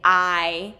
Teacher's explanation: Long I at the beginning. I. So we get that full movement in the mouth.